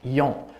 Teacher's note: Now that yon has a nasalized sound in it. So it's an A with a hook. · And with that hook, it makes the vowel nasalized. Nasalization has moved onto the vowel itself in Polish. So originally it was an N in Latin, and it has now become a nasalized vowel. So it's still a small remnant of that N.